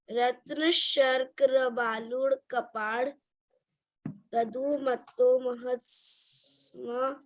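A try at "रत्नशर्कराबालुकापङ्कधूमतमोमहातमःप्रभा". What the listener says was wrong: Matlab, it is written, the 4th word is pank. That's not d, it's actually ng.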